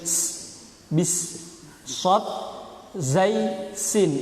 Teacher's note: sin itu punya sifat sofir. Sofir itu bersiul seperti halnya suara burung.